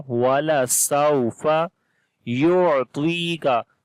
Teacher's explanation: On the ain we read from the middle of the throat and we make soft sound